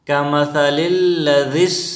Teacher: ذال بھی بالکل نرم پڑھنی چاہیے، جس طرح سا نرم حروف میں سے ہیں اس طرح ذال بھی بالکل نرم پڑھنی چاہیے